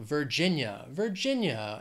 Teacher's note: three syllables stress is on that second syllable